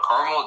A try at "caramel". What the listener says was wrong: Caramel, you have to stretch out the extra A. The A is silent.